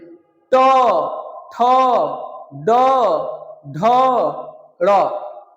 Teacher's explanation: जीभ जो है ऊपरी छत के अगले भाग को टच कर रही है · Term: मुर्धन्य